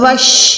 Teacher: شین پہ جب بھی شد آتی ہے یہ حروف شمسیہ میں سے ہے، حروف شمسیہ میں سے ہے، دیٹ مینس ہم نے یہاں پر الف اور لام کو نہیں پڑھنا، ہم نے ڈائریکٹ کیا کرنا ہے، ہم نے ڈائریکٹ واو کو شین کے ساتھ مکس کر دینا ہے، کیونکہ یہاں پر ڈبلیو سیمبل یعنی شد کی نشانی آ گئی، تو یہ ہو جائے گا واو شین زبر وش۔